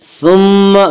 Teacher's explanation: ثم میم مشدد غنہ ہوگا، غنہ کی مقدار 1 الف ہے